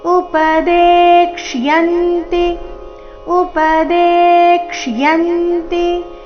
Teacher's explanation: ದೇ ನಂತರ ಅರ್ಧಕ್ಷ ಪೂರ್ತಿ ಯ ಇದೆ. ಯ ಸ್ಪಷ್ಟವಾಗಿ ಕೇಳಿಸ್ಬೇಕು. ಯ ಮೇಲೆ ಆಘಾತ ಬರಬೇಕು.